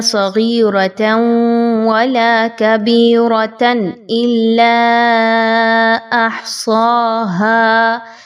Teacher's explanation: جب ادغام مع الغنہ کرنا ہے دو زبر کی تنوین کے بعد واو آ رہی ہے. صغیرۃ ولا غنہ کرتے ہوئے پڑھیے